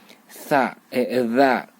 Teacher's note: Saya ingatkan kembali bahwa ini cara membacanya ini lidah masuk ke dalam, ini melewati gigi seri dan rapat. Ujung lidah walaupun hanya sedikit harus melebihi, wajib melebihi gigi depan kita yang seri itu walaupun sedikit, lalu kemudian rapat dengan gigi za. Kalau ini za masuk ke dalam.